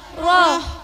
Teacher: ha dikeluarkan dari tenggorokan yang tengah dengan angin yang halus bukan kasar